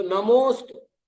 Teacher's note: नमोस्तु नमो अस्तु नहीं बोल रहा हूं क्योंकि अ का लोप हो गया